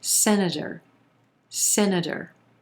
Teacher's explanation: then our t becomes a flap t sounding like a quick d again that final syllable is going to be very soft senator